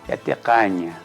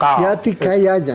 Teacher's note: No es caña, no es duro, no es con el apóstrofe, sino es más glotal.